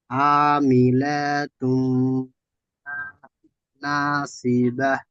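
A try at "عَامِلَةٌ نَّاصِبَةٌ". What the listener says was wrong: আমিলাতুন, লামটি একটু টান হয়ে যাচ্ছে, খেয়াল করে পড়বেন, লাম টান হবে না।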